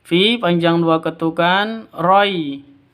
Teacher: Fi panjang 2 ketukan karena mad asli ya, karena ada ya mati diawali dengan kasroh.